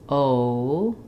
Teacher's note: I start very rounded, o, and then I relax a little bit, the rounding, and I raise the tongue and close the jaw as I'm saying o. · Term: diphthong